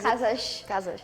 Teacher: usually when we have an S at the end it kind of becomes a sh sound